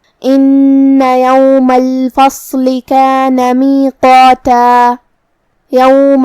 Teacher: قاف کی ادائیگی زبان کی جڑ اور تالو کے نرم حصے سے ہے. قاف حروف التفخیم میں سے بھی ہے تو ہمیں اسے بھاری آواز میں پڑھنا ہے، جو کہ اس کے بعد مد الف ہے، اور مد الف اپنے پیچھے والے حرف کا حکم لیتا ہے تفخیم میں اور ترقیق میں. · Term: حرف القاف